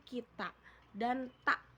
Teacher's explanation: fonem K memiliki dua alofon, yaitu K dan glotal yang bisa terjadi pada akhir kata